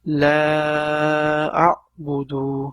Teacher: Mana o'ng tarafda la a'budu deb birinchi boshda turgan la ya'ni besh harakat qolib cho'zib o'qiladi